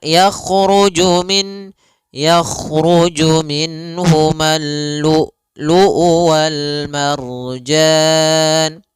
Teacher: Kalau syiddah adalah tertahannya suara. Maka lu luu harus tertahan.